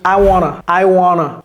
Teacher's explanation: On a enlevé ce T, on a enlevé ce T, et ça devient comme un A.